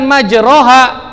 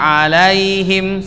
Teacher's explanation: harokat fathah hanya dirubah menjadi condong ke kasro jadi e bunyinya apa bismilahi majreha bukan majroha majreha wa mursaha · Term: imala